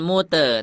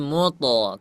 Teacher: Karena huruf to itu dia tebal hurufnya ya. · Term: huruf tebal